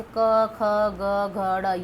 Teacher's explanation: ये कंठ से ध्वनियाँ निकलती है ना